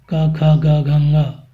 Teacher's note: ये सभी वर्ण कंठ वर्ण हैं, अर्थात कंठ से इनका उच्चारण किया जाता है।